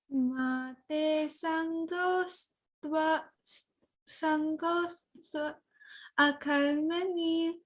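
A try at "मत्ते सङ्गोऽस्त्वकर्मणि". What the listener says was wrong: So don't split it like that. When you say sangostva karmani, a is included in it. So you don't have to say a again. Mate sangostva karmani.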